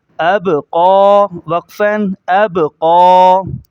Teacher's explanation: قاف کو موٹا کریں گے اور کھڑے زبر کو ایک الف کے بقدر کھینچیں گے